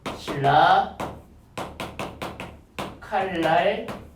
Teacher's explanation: 유음으로 통일되는 거예요. 그래서 완전동화라고 그러죠? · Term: 유음화